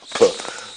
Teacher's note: it begins with a bilabial, voiceless stop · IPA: [p]